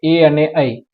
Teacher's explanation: કંઠ તાલવ્ય, એ અને ઐ, કંઠ અને તાળવા બંનેમાંથી બોલાય એવા સ્વરને કંઠ તાલવ્ય સ્વર કહે છે